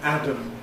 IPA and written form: ˈædəm (Adam)